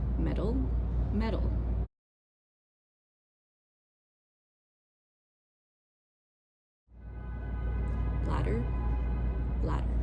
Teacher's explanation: in Standard American English, we would just use the flap sound